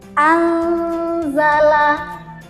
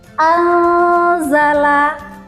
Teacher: Ketika kita membaca huruf nun sukun ini, seolah-olah lidah kita sudah siap untuk mengucapkan huruf za. Ingat pada bacaan ikhfa ini jangan sampai nanti ketika kita membaca bacaan ikhfa lidah kita jangan sampai menyentuh gusi bagian atas.